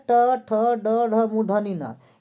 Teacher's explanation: इसका उच्चारण किससे होता है, तो मूर्धा से होता है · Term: टवर्ग